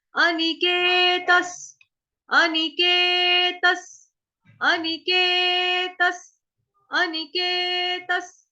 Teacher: विसर्ग का उच्चारण जो है वो आपका हलंत स से होगा।